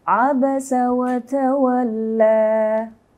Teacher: Kalau mau diwakaf, bacanya cukup 2 harakat aja. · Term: mad badal